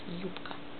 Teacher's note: Man schreibt B, spricht aber P raus.